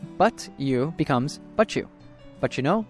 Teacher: When a word ending in a T sound is followed by a word ending with a Y sound, they often morph into a ch sound. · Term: connected speech